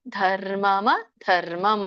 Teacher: ಧರ್ಮಂ ಎರಡು ಸಲಿ ಮಹಾಪ್ರಾಣ ಇದೆ